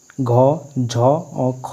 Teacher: घ झ और ख इसमें तीनों महाप्राण है